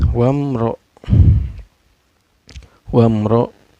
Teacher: mim sukun nya dibaca secara jelas gak boleh dengung dan gak boleh memantul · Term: izhar syafawi